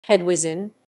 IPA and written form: xɛdˈviʐɨn (Hedwiżyn)